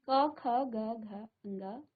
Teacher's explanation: आपकी जीभ कहीं भी स्पर्श नहीं कर रही है, यानी कि ये जो आवाज है ये आपकी कंठ से आ रही है। ठीक है, तो इसको हम कहते हैं कंठ।